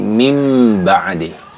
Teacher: mengganti bunyi huruf nun sukun menjadi bunyi huruf mim. Min ba'di jadi mim ba'di, ya. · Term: iqlab, iklab